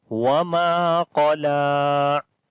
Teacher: So make sure to read heavy sound on the qaf and light sound on the lam.